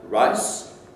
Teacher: The S at the end is fortis, so you don't have any voicing.